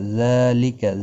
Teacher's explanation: ذالک زال کے اوپر کھڑی زبر ہے، 1 الف کی مقدار کے برابر کھینچ کر پڑھیں گے